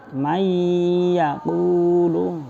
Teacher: Setelah mim ma itu ada nun sukun bertemu ya, ya. Namanya juga idgham, dimasukkan ya, nunnya dimasukkan ke dalam ya, menjadi bacaannya seperti yang di ya-nya ditasydid